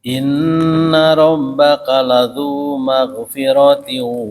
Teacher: Ah, jangan ada kolkolahnya. Dia mengalir.